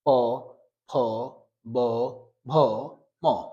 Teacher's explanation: প উচ্চারণ করতে গেলে দেখা যাবে যে দুই ঠোটে লেগে যাচ্ছে প থ ব ভ ম সবগুলি লেগে যাচ্ছে ঠোটে ঠোটে লাগলে